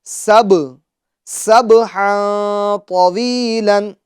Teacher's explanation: 5 ہیں، قاف، طا، با، جیم، دال، تو حروف قلقلہ میں سے با آیا ہے، با ساکن ہے تو آواز لوٹائیں گے، سب، سبحا طویلا، اور ہا کی تنوین میں اخفا یعنی گننا ہوگا، کیونکہ تنوین کے بعد حروف اخفا میں سے طا آ رہا ہے